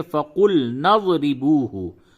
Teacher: ملا کر کے پڑھیں گے تو نون کو ضاد سے ملائیں گے